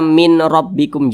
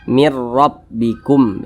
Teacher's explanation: Dimasukkan ke huruf ra, jangan dibaca min rabbikum, jangan, tapi langsung dimasukkan ke huruf ra. Jadi huruf nunnya ini langsung dimasukkan ke huruf ra